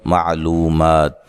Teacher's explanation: نون تنوین کا اخفا ہوگا، اخفا مع الغنہ